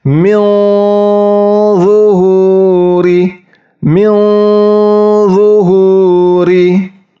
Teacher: ujung lidahnya itu mendekati pangkal gigi seri atas, tetapi lidahnya tetap diangkat mendekati langit-langit